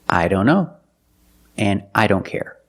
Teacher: Or when we see the word don't. A lot of times the T in don't is silent.